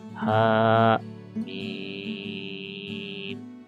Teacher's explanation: Maka haknya 2 harokat, mimnya itu 6 harokat.